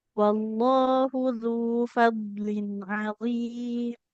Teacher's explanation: zal domah bertemu dengan wau. Harus kita panjangkan.